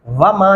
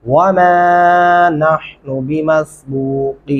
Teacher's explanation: वाव पढ़ते हुए आपके होंठ गोल होने चाहिए